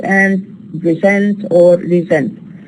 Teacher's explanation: Here the sound sa occurs between two vowels, but what we actually produce is za. So sa becomes za, voiceless to voice, because it occurs between two vowels, or we say in intervocalic position. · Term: intervocalic voicing